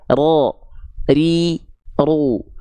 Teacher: takrir itu rnya bergetar tapi bukan dengan getaran yang berlebihan jadi getaran huruf ro itu cuman seperti ini saja ro ri